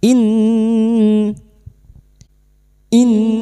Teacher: nun yang bertasdid ghunna musyaddadah kita dengungkan selama tiga harakat.